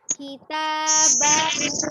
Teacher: dirasakan hu benar-benar dari tenggorokan bagian bawah. Jadi bukan sekedar bunyi bahu, tapi bahu ya.